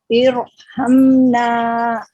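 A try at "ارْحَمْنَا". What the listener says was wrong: Oke, jadi untuk Ibu evaluasinya adalah jedanya Bu ya. Jeda di huruf ro-nya dihilangkan, langsung mengalir ke huruf setelahnya. Irha, irha. Oke, jadi ro-nya tahan.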